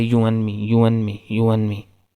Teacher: So when we say this phrase you and me, so many times speaker do not pronounce this d sound, and they just say you and me. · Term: elision